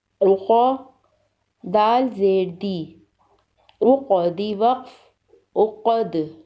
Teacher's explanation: عین پیش عو، قاف زبر قا، عقا، دال زیر دی، عقدی وقف، عقد، عقدی وقف، عقد۔ عین حلق کے درمیانی حصے سے ادا کریں گے، قاف کو موٹا پڑھیں گے اور وقف کی صورت میں دال پر قلقلہ ہوگا۔